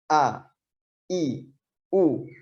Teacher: Maka ketika kita menyebut huruf hamzah, maka pita suara itu menempel, menutup, ya, menutup dengan rapat sehingga bunyi huruf hamzah itu keluar kuat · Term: syiddah